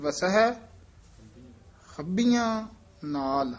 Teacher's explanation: ਹੱਬੀਆਂ ਕਸ ਕੇ ਬੋਲਣਾ ਭਬੇ ਨਾਲ ਉਚਾਰਨ ਕਰਨਾ